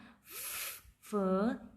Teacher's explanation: अपर teeth और lower lip का यूज़ किया हमने